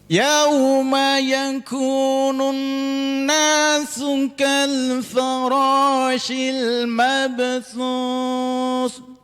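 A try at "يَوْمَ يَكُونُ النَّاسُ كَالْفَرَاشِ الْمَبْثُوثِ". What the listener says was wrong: Mabthuth, Pak. Mabthuth, taknya masih kurang, digigit lidahnya. Mabthuth. Untuk yang lainnya Masya Allah, pahrotnya Masya Allah.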